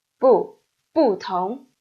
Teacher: Tone is a second tone, right? So, 不, it keeps its original tone, fourth tone.